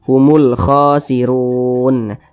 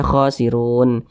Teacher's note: huruf nun ini kita sukunkan kita matikan